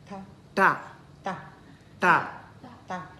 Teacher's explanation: Our tongue curls back and then tap on the upper palate. Ta. Okay, so it taps on the upper palate. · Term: curl one